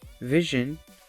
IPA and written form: ˈvɪʒən (vision)